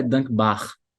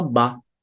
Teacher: você não puxa o r no final